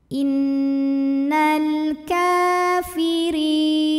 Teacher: Thobi'i muqaddar karena ada baris fathah tegak di atas huruf Kaf cara bacanya panjang kafnya dua harakat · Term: Mad Thobi'i